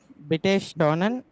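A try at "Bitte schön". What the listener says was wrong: బిటే షోన్. ఎన్ లేదు కదా చివర్లో, మళ్ళీ ఎన్ నెన్ లేదు కదా. బిటే షోన్.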